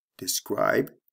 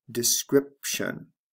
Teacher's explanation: notice there are two sound changes here the long i becomes a short i